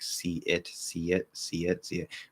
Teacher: Usually going from E to I, where the standard thing, the clear thing to do is go, you link with a small Y sound.